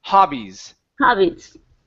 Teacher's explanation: Open it up wide for an ah sound instead of ha.